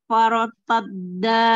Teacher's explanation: tebalkan ro sebelumnya fathah, ro sukun